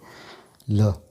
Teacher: ल वर्ण का उच्चारण करते समय जिह्वा और दांतों के मध्य से वायु बाहर निकलती है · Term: पार्श्विक व्यंजन